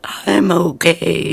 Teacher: You have to talk when you're breathing in.